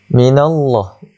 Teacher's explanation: Allah lafzul jalalah di sini dibaca dengan tebal, tafkhimkan dia. Sebab apa? Sebab nun itu berbaris fathah.